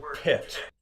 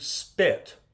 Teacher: Say the English word pit. If you should feel a real puff of air on the P. Now say the word spit. You'll notice that there's much less of a puff of air on that P. Because in English, when you have an S in front of a consonant, it doesn't aspirate.